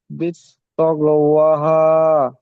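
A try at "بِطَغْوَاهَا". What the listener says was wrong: বিত্তক বলবেন না, বিতগ। বিতগ ওয়াহা।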